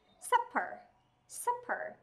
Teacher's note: Trọng âm rơi vào âm tiết đầu tiên, thế nên âm ER chúng ta sẽ được viên âm là ơ ngắn.